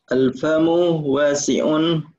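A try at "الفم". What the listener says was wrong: Munya pendek. Al-famu.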